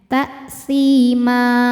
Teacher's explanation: Ma mad iwad karena ada harokat fathah tanwin yang diberhentikan. Cara bacanya panjang 2 harokat tanpa bunyi n.